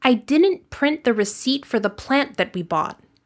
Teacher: Next, native speakers typically pronounce a stopped T at the end of a sentence or before another word that begins with a consonant sound. Unlike a pure T, you do not push any air. This results in something that has a slightly shorter vowel sound.